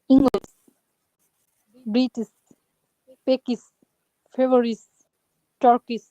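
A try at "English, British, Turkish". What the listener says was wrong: You're pronouncing all of them as a sa sound, but it is sha sound. In English, there is sa sound and there is sha sound. So it should be sh sound.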